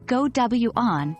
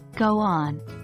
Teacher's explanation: the w and y sounds that creep in particularly in certain Regional accents for instance you might hear go W on instead of go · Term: intrusive sounds